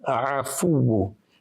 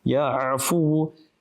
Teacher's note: Ayn, remember the makhraj, the sound emanates from the center of the throat.